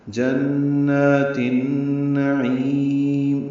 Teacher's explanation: جنات النعیم نون کو لمبا نہیں کرنا، عین کو لمبا کرنا، اور میم ساکن پہ اظہار ہوگا، اظہار شفوی وقفاً.